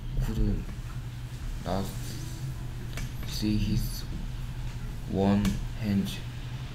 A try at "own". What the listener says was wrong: One이 아니고 own. His own hands. One hand. Own hands.